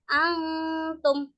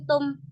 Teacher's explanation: Jadi dengung tapi suaranya itu seperti antara suara nun dan ta di antara keduanya. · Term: ikhfa hakiki